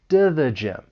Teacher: that t it comes between two vowel sounds. So I'm going to pronounce it as a flap t.